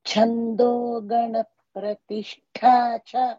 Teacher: ఛ ఇన్ ఛందోగణ అండ్ ప్రతిష్టా ఠ both are మహాప్రాణస్ · Cha in Chandogana and pratishtha tha both are Mahapranas.